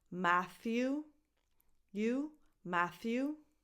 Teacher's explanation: Voiceless th, as in the word think, so it's not a t, it's a th